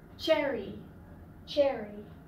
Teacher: So it's t and sh together, ch. And you have it in cherry, cherry.